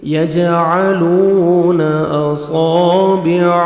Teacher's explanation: عین کو اپنے صحیح مخرج سے ادا کریں گے تاکہ حمزہ میں ساؤنڈ مکس نہ ہو. واو مدہ، لام کو 1 سیکنڈ کھینچیں گے. یجعلون اصابعهم، صاد کو موٹا کر کے پڑھیں گے.